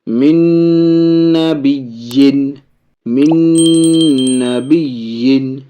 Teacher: یہ سب مع الغنہ ہے، ناقص ہے، ناک میں آواز جائے گی، غنہ کے ساتھ پڑھیں گے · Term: ادغام نون